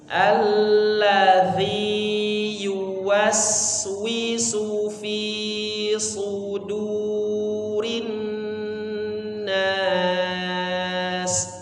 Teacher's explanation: huruf sin, suaranya mengalir terus sampai bertemu huruf berikutnya, sampai bertemu huruf wi, wa ya, wi.